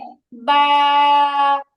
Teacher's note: আপনি বা উচ্চারণ করার পরে অতিরিক্ত একটা টান যোগ করছেন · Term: মাদের হরফ